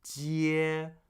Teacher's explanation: high, flat, and unchanging. That's the first tone.